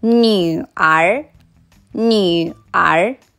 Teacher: new කියන වචනේ අපි කියන්නේ third tone එකෙන්. r කියන වචනේ කියන්නේ second tone එකෙන්.